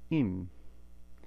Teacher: we're just going to close the vowel sound off, and that's what anuswara means, is a closing